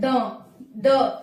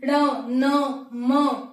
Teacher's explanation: म दोनों से हो रहा है तो ये अनुनासिक कहलाते हैं जिनका उच्चारण नाक और मुह दोनों से होता है